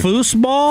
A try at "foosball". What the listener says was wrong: Is it foos? I've always said it with like a Z. You're saying foosball.